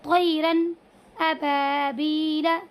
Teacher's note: तनवीन और नून साकिन की आवाज़ को ज़ाहिर करके बग़ैर किसी गुन्ने के एकदम जल्दी से अदा करेंगे · अब हमने इस तनवीन की आवाज़ को ज़ाहिर करके पढ़ा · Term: इज़हार